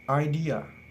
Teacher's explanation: In this word, there are three syllables, idea. The second syllable, d, in this word is stressed syllable, so it will be longer and higher in pitch than the first and last syllable, a. So when we read it, it will be idea.